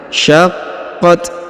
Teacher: huruf q ditahan dan ditekan karena berharakat tasdid ya syaqqat kemudian huruf Ta di ujung diberikan hembusan tipis ya